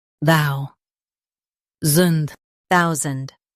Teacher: Stress thou and soften sand.